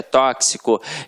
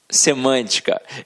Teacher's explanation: todos esses exemplos aqui são proparoxítonas porque a sílaba tônica é a antepenúltima sílaba e quando isso acontece a gente acentua-se a pronúncia é fechada